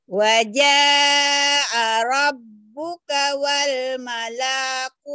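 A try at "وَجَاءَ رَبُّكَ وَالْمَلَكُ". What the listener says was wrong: Wal malaku pendek.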